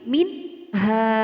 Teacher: Terdapat nun mati bertemu dengan huruf ha, dinamakan hukum bacaan izhar. Cara membacanya dengan jelas. Jadi nun mati di sini dibaca jelas.